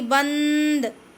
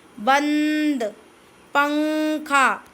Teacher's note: आवाज कहां से आ रही है सिर्फ नाक से आ रही है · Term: अनुस्वार